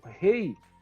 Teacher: o E é mais forte, a pronúncia é mais forte, e o I tem a pronúncia mais fraca, menos acentuada. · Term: ditongo